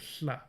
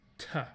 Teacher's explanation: what we thought was a lateral fricative was in fact an aspirated stop, t, rather than hl